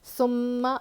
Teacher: ثم میں سا ہلکا پڑھیں گے, میم پر تشدید غنہ کریں گے, اور حرکات ہے نہیں کھینچیں گے.